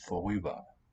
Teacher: Note that the R becomes the onset. It's vorüber, but here, when they fuse, when these merge, we get vorüber.